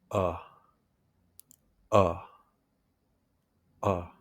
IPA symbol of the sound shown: ə